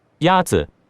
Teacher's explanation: The first tone is a high, level tone.